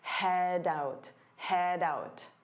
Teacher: Notice how head out combine together to sound like head out, doubt. So you hear that D sound on out, head out, head out.